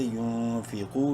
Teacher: سے نہیں ہے اخفا کریں گے اس نون میں یون فی قاف واو پیش کو منہ بھر کے پڑھتے ہوئے قاف کو ایک الف کے برابر لمبا کریں گے